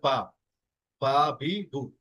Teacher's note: বায়ের মাখরাজ হচ্ছে দুই ঠোঁট একবার যুক্ত হবে, তারপরে খুলে গিয়ে হবে বা